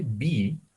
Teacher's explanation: that's the p sound it does not vibrate it's just but when you say b you're vibrating your throat